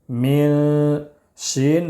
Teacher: میم نون زیر مین، اس میں اخفا کریں گے، اس لیے کہ نون ساکن کے بعد حروف اخفا کے 15 حروف میں سے شین ہے، اس لیے اخفا کریں گے